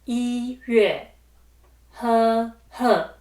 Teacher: E is pronounced with the first tone, followed by Yueh, which is the fourth tone.